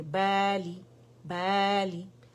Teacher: لام کسرہ لی ہے تو ایک کاؤنٹ کے لیے آواز نیچے جائے گی